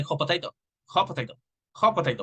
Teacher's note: We eliminate the T because we are combining the two words